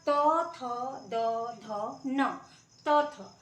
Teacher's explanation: उसके बाद से आपका त, थ, द, ध, न, त, थ। तो जब जीभ जो है दांत को टच करता है, एकदम दांत को पूरे नहीं, जड़ को टच कर रहा है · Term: दंत्य